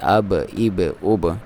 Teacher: اور یہاں با ہے، حروف کلکلہ میں سے ہے، اس پہ کلکلہ کرنا ہے